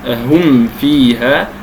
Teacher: لاشتراك الفاء والواو والميم في المخرج، لأن الميم تخرج بانطباق الشفتين